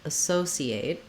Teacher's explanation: if I use the S sound, associate, what I have is second syllable stress. So my so syllable is always going to be the long syllable, and it has the clear vowel.